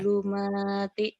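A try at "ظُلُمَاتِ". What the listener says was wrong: Zo-nya agak rapuh. Zulumat.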